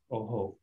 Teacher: the visarga kind of mirrors the sound before it. So if you have an O and then visarga, it becomes oho